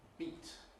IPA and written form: biˑt (beat)